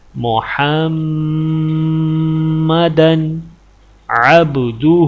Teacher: دال کے اوپر دو زبر ہیں اور دال کے آگے حروف حلقی ہے، اس لیے دال کے اوپر غنہ نہیں کیا جائے گا۔